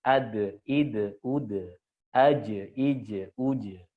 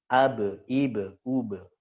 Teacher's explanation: Dal, jim, dan ba ini huruf tipis, maka qalqalahnya dia tipis.